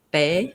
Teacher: without the puff of air, bay, I wasn't saying a B, but you can hear it sounds a little bit more like bay than pay